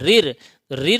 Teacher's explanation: जीभ की नोक जो है वो ऊपर वाले दांतों के पीछे ताल का जो हिस्सा होता है जस्ट पीछे उसमें टच होगी जीभ उसे मुर्धा कहते हैं समझे तो इसका उच्चारण स्थान मुर्धा है रिर का यह तो